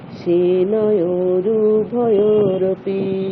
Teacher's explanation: রুতে গিয়ে সময় নেওয়া যাবে না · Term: হ্রস্ব